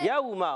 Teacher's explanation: واو ساکن سے پہلے زبر، واو لین ہے، واو لین نرمی سے ادا ہوتا ہے